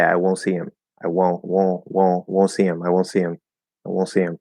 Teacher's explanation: If you do a little bit of a nasal, even though there's no N there, it sounds like there's an N, and then of course the T just drops away.